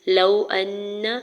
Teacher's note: واو ساکن سے پہلے لام کے اوپر زبر واو لین ہو رہا ہے، نرمی سے موڑتے ہوئے ادا کریں گے۔ حمزہ کے زبر کو نون مشدد کے ساتھ ملاتے ہوئے غنہ کریں گے اور نون کے زبر کو بغیر کھینچے ہوئے ادا کریں گے۔